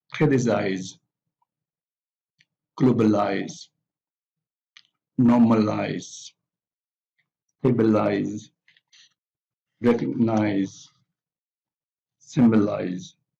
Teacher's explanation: they all have the primary stress on the first syllable